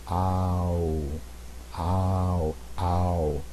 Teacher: And what you'll notice is it goes from the most open vowel position, ah, to the most closed vowel position, oo. And as you're doing it, your lips get round and your jaw comes up. So you go ow, ow, ow.